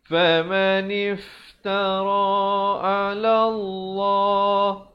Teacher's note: Lafzul jalalah dibacakan tebal kerana datang sebelumnya baris fathah dengan 2 harakat.